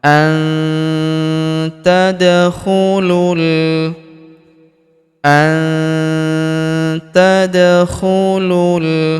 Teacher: Maka nun sukunnya melebur ke huruf ta. Kita baca dengung dan samar. Dengungnya kita tahan dua sampai harakat.